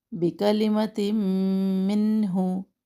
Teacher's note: بکلمت منہ، سنگل حرکات ہے، کوئی بھی حرکت لمبا نہ ہو، تا دو زیر کے بعد میم مشدد، اب ادغام کر رہے ہیں غنہ کے ساتھ